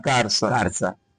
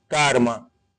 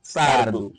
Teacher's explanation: É um fenômeno linguístico em que o indivíduo, no lugar do L, ele coloca R e vice-versa. Certo? Calça, ele vai pronunciar carça. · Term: rotacismo